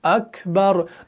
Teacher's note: काफ को थोड़ा सा क्या करते हैं, बिल्कुल उसके अंदर नरमी से उसको अदा करते हैं और थोड़ा सा एयर फ्लो को भी पास करते हैं, जो उसका सही तरीका है। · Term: सिफत हम्स